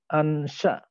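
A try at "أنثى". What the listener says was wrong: Unsa, bukan ansa. Unsa. Ya, unsa.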